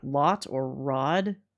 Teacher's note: There are specific vowel sounds that are characteristic of general Americans such as unrounded vowels like lot or rod.